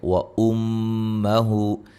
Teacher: میم مشدد پہ غنہ ضروری ہے، ہو مد اصلی ہے.